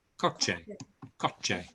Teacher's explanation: It's not a sh. It's a ch sound.